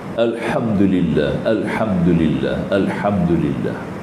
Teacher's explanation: Alhamdulillah, alhamdulillah, ha maftuhah juga, mim syafawi kena zahir kepada dua bibir, mim kan, huruf bibir kan.